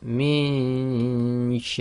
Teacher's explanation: we're getting our tongue ready for the articulation of Sheen instead of the noon so on the Left we do the nasalization in the nose · articulation of Sheen instead of the noon so on the Left we do the nasalization in the nose but our tongue is not going to where we'd normally put it for noon we already have it in the position for the sheen on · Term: Ikhfaa